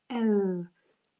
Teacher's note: when i say the letter l i put the tip of my tongue to the tip of my palette l and the top and the bottom teeth are apart when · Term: the sound l